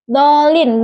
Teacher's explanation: huruf dal makhrajnya itu di ujung lidah dan gigi seri atas. Maksudnya itu getaran.